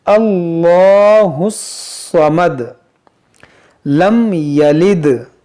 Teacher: देखिए, हम 'दल' पर कलकलाह करेंगे।